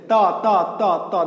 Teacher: ত ত ত ত দাঁত থেকে, চা ছা যা তালু থেকে, কা খা কণ্ঠ থেকে।